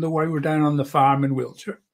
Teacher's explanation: You roll out the R's a lot more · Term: West Country accent